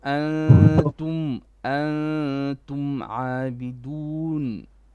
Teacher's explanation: the ikhfa is only on the noon, okay, not on the meme. So the meme still has only one gunna. So antum عابدون.